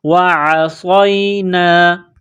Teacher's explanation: سمعنا وعصینا، عین کو گلے سے نکالیں گے زور لگا کر